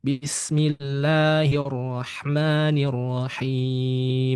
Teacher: Huruf lam ini kondisi tebalnya itu hanya untuk lafaz Allah yang sebelumnya berharakat fathah atau dommah. Maka kalau lafaz Allah sebelumnya berharakat kasrah, lam dibaca tipis.